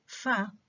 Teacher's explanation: the lower lip is brought very close to the upper front teeth. The lower lip with the upper front teeth, okay? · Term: voiceless labiodental fricative